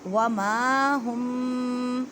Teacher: میم کو ایک الف کی مقدار میں کھینچ کر پڑھیں، الف سے پہلے زبر ہے